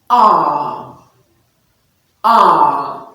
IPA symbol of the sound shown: a: